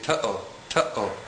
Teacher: the letter Aleph makes a glottal stop sound. This is similar to the sound that is made between the two syllables in the common English expression uh-oh.